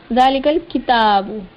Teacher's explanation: ज़ालिकल किताबु ला रैब फीह, ज़ालिकल किताबु खड़ा ज़बर, लाम के नीचे ज़ेर, काफ पर ज़ेर, काफ के बाद लाम साकिन है। लाम साकिन हुर्फ जो है ये अपने से पहले वाले मुतहर्रिक हुर्फ यानी काफ उसके साथ मिल जाएगा, मिलकर पढ़ा जाएगा। ज़ालिकल किताबु, किताबु, काफ के नीचे ज़ेर नहीं खींचा इसको, ता पर खड़ा ज़बर है, एक अलिफ की मिकदार के बराबर इसको खींच दिया, और फिर बा पर पेश है वो बगैर खींचे।